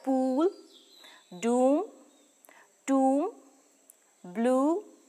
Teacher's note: and there is noticeable tension in the muscle of the thumb the lips are fairly closely rounded we can describe it as a high back rounded vowel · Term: long u sound, long oo sound